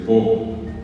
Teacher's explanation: en vez de decir Pro dice po